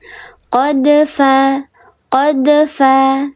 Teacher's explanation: Diledakkan tapi ledakan atau pantulannya natural saja karena di tengah kalimat. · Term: qalqalah yang sugro